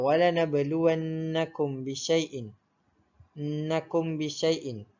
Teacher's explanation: Untuk kadar bacaan ifat syafawi pula, ianya dibaca dengan dengung ataupun didengungkan dengan kadar 2 harokat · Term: ikhfa syafawi